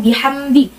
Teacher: mim sukun bertemu dengan dal. Cara bacanya jelas di mimnya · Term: idhar syafawi